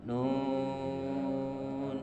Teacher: Nun itu harus 6 harkat.